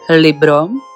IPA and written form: ˈliːbro (Libro)